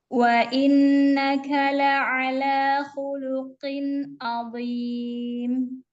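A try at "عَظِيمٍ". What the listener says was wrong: Ainnya tampakkan dan dha-nya tetap terangkat isti'lanya. Azim.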